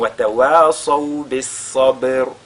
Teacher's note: Donc bis-sa et la lettre sad qui est avec at-tafrim, le ba qui suit qui est sakina, on fait donc al-qalqala sur ce ba. Parce que ba c'est une lettre de al-qalqala.